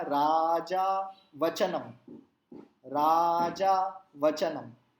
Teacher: time उतना ही लग रहा है लेकिन राजा में 2 ही अक्षर है, वचनम में हमने 4 कर लिए क्योंकि वो छोटे अक्षर है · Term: रस्व दीर्घ का उच्चारण